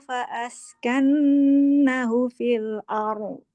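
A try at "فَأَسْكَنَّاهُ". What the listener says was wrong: Panjang tuh nanya. Askanna. Askanna. Iya, nanya 2 harkat.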